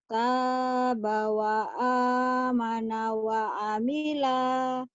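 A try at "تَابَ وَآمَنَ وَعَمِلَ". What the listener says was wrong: Pendek ujungnya. Tabawa amana wa amila. Pendek lagi.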